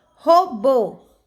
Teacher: Guarani, ni é uma oxítona, pois a sílaba forte é ni. Robô, bo é a sílaba forte, a última sílaba, então eu chamo de oxítona.